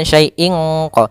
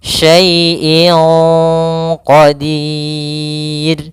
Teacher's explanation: Jangan pakai eng. Tapi dia langsung disamarkan ke huruf qofnya. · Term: ikhfa